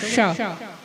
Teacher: मूर्धन्य जब जिह्वा थोड़ा मुड़ जाएगा और तालू के पीछे भाग से छुआएगा तो वो श। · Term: मूर्धन्य श